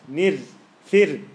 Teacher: So the first ra is light. Nir, fir, ala wazni, fir'aun.